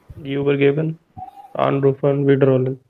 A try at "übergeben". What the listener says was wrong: The speed is correct, but your Betonung is not correct. Your stress is not right. Übergeben. Übergeben. Pronounce that part. Übergeben. This accent marker, a good dictionary will have this. Shows you the accent is on the syllable, on the second half or whatever is following this marker. And übergeben. Nicht trennbar.